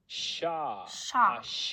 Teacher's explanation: It says it's post-alveolar fricative.